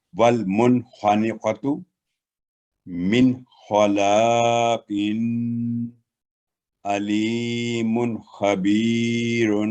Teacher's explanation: نون ساکن یا تنوین پر 1 سیکنڈ کی آواز واضح اور کلیئر ہوگی، غنہ نہیں ہوگا